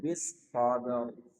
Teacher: Ra-nya tebalkan. Sodnya dialirkan dulu, baru masuk ra.